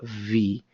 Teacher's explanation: En realidad es más suave, es V, como si botara un poquito de airecito. V. No es Fi, no es una F, pero es una V.